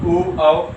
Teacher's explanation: मुख का आकार बिल्कुल गोलाकार हो जाए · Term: वृत्तमुखी